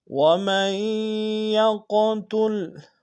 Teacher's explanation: وَمَن يَقْتُلْ، وَمَن میں میم کو یا کے سامنے لیں گے، یا کے اوپر شدہ زور دیں گے، اور یا کو قوف کے ساتھ ادا کریں گے، قوف کو موٹا ادا کریں گے، قوف کے اوپر جزم ہے، قلقلہ کریں گے۔ وَمَن يَقْتُلْ مُؤْمِنًا، میم کو حمزہ کے سامنے لائیں گے، یہ حمزہ بشکل واو ہے، جھٹکا دیں گے، آخر میں نون کی تنوین کو میم کے سامنے لائیں گے، شدہ زور دیں گے۔